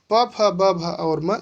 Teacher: प फ ब भ और म, इसको ओष्ठ के सहारे यानी बाहर से बोला जाता है। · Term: प वर्ग